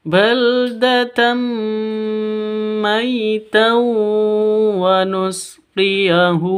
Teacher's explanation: Kalau yang ini maitau langsung masuk ke wawu seperti itu ya. Baldatam terus ditambah disertai dengan dengung dua ketuk. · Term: idgham bi gunnah